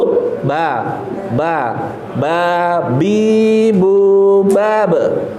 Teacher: ini jahar. Jadi nggak keluar anginnya. Ba. Mingkem dulu.